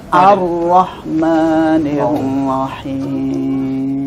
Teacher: Nir tipis dulu baru ro-nya tebal.